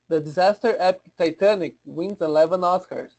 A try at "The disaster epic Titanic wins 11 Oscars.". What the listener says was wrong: Because it's a title, we need a nice clean stop. So I need to hear that stop. The disaster epic Titanic. Yes, you can say it faster, but we need that stop. The disaster epic Titanic wins 11 Oscars.